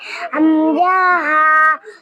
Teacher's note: ১ নম্বর মাখরাজ হলকের শুরু হইতে হামজা হা